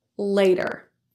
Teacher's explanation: pronounced as a lingual flap T, meaning rather than released like a T sound with the tip of the tongue and a release of stopped air, it's voiced. Since there are vowels all around the T in front and behind, and it's an unstressed syllable, it will sound more like a D.